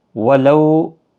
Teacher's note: لو واولین ہے، تھوڑا نرمی کے ساتھ آدھے الف کی مقدار کے برابر کھینچ کر پڑھیں گے